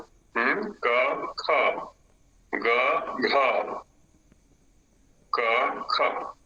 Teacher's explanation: एक तीन पाच में अल्प प्राण का प्रयोग है